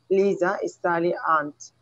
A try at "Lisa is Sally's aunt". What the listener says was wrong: Very, very important. You have to pronounce the S, Sally's.